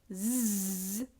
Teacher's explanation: The other sound zz is a consonant sound. And we can tell it's a consonant sound because of the blockage that's coming from the teeth and the tongue.